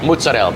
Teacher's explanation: The vowel on the end is gone.